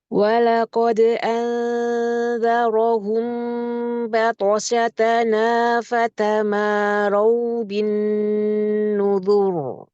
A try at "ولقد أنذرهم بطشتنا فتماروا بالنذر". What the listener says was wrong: Oke, walaqad huruf qaf, lebih keras lagi. Lidahnya kurang ke belakang ya. Walaqad andarohum ro tebal.